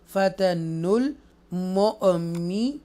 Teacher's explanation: ये जो नून दोम्मा है, नून के ऊपर जो पेश है वो लाम साकिना के साथ मिलेगी